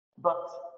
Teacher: Следующее изменение – это переход краткого У в новый краткий гласный звук, более низкий по подъему, это звук А. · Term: Краткая А, крышечка